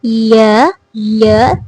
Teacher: when I am producing yeah sound, so basically my middle tongue, the middle part of my tongue is touching my hard palate. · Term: palatal sound